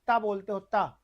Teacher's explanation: जब आप ता बोलते हो ता, तो जिह्वा जो है आपकी दांतों को छूती है।